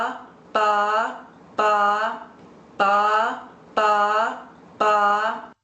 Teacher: the lips going together in the sense that you're hearing ba ba ba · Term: b as in boy